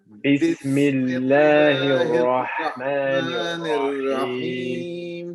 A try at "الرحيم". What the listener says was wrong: Remember, it's not a Rahim. We're not going all the way to the bottom. We'll just go into the middle of the throat. And we're stopping right there. Ar-Rahim.